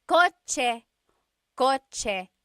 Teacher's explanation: In the Tagalog alphabet, there is no letter C in Tagalog naturally occurring. The ch sound is a TS combination.